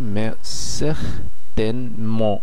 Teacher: এখানে আপনারা নিশ্চয়ই খেয়াল করছেন আমি একটি চন্দ্রবিন্দু ব্যবহার করছি, তার মানে এখানে এন কে বোঝানো হচ্ছে। শেষে তেটি সাইলেন্ট আছে এবং এনটি নাকের দ্বারা উচ্চারিত হয়ে যাচ্ছে